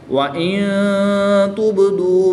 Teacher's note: نون ساکن کے بعد تا حروف اخفا میں سے ہے تو یہاں پر اخفا ہوگا، یعنی غنہ زمانی کر کے پڑھیں گے۔ با حروف کلکلہ میں سے ہے اور جب حروف کلکلہ ساکن ہوں تو ان میں کلکلہ خوب ظاہر کرتے ہیں، تو اس میں کلکلہ بھی خوب ظاہر کریں گے۔